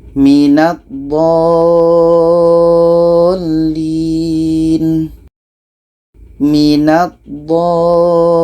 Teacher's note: Ini mad lazim kilmi mutsaqqal. Cara bacanya, dha ini kita panjangkan 6 harkat baru masuk ke huruf yang ada tasydid.